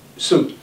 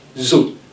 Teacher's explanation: so is a voiceless consonant sound, while zo is a voiced consonant sound